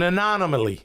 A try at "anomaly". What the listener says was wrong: You had an extra syllable the first time. The first time you said anomaly.